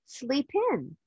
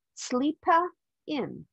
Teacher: sleep ends with the consonant sound p and in starts with the vowel sound I the sound is Blended